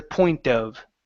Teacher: here we want to use the flap T because the next word starts with a vowel